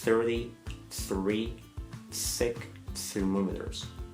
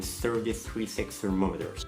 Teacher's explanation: كل TH هنا هتنطق س، لازم لسانك يكون بره اسنانك